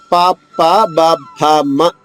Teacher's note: రెండు పెదవులు కలిపి పలికేది పవర్గము